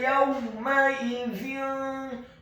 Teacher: Kata yawma idzin, huruf ya-nya dibaca tipis, fathah 1 harokat, huruf waw-nya dibaca sukun dengan posisi mulut kita agak tertutup dan dengan gerakan yang agak cepat